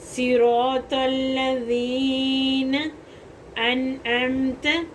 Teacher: عین حروف حلقی ہے، حلق کے درمیان والے حصے سے ادا ہو رہا ہے · ذال جو ہے نا لمبا ہوگا تھوڑا سا اور سافٹ بھی پڑھا جائے گا. یہ بہت نرم حروف ہے.